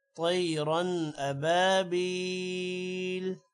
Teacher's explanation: آگے حروف حلقی آ رہا ہے، اسی لیے طیرن پہ غنہ نہیں ہوگا